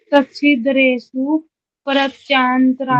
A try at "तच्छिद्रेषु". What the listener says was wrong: दरेसु नहीं, stop stop, दरेसु नहीं बोलना, द्रेसु, दरेसु नहीं बोलना, द्रेसु। हाँ, जब और बोलते हैं ना तो आप बोलना मत, सुनना उनको वो क्या क्या बोलते हैं, ठीक है, उनकी आवाज को पकड़ना। तच्छिद्रेसु बोलते हैं, आप तच्छिदरेसु बोलते हो।